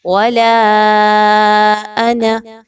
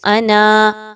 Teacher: آپ نے یہاں پہ نون الف زبر نہ نہیں پڑھنا، بلکہ نون زبر نہ پڑھنا ہے